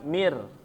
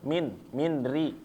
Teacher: Huruf nunnya ini hilang ya. Benar-benar hilang, yaitu sempurna. Idghamnya sempurna, masuk langsung ke huruf ro. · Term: idgham kamil